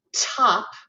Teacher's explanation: i'm releasing it with my tongue in the hard palate right behind my front teeth